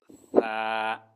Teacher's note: জিহ্বার আগা উপরের দাঁতের আগার সাথে লাগিয়ে মাঝখান থেকে হালকা একটু বাতাস বের হবে।